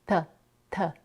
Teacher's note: Her T sounds a bit different as well. She uses a dental T where the tip of the tongue touches the upper front teeth, which is typical in Spanish. T. For the T sound in English, the tip of the tongue is a bit more backwards, touching the alveolar ridge, which is right above the upper teeth.